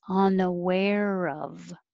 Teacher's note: The R will connect to the of.